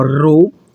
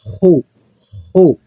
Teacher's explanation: esse Rho tanto pode ser pronunciado de forma lingual, ó, Rho, como de forma gutural